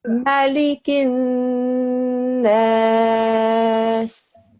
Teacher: Secondly, we're going to press down on the noon. Thirdly, we are going to do a ghunna sound on the noon mushaddad because a noon mushaddad warrants a ghunna sound.